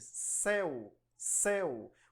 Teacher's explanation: Começa com E, depois U, mais suave. Por isso, esse ditongo é chamado de ditongo decrescente.